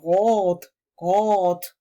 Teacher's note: lo normal es que se vocaliza como la R francesa, es decir, R como si fuera rot, rot, con la garganta